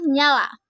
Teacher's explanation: Bunyi ny dengan ciri-ciri hidup, nasal, laminopalatal